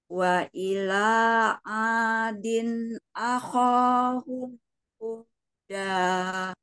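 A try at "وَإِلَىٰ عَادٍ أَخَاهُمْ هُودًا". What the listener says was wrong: Ya bagus, final A-nya ya tadi sedikit sedikit terseret. Wa ila adin aho langsung aho.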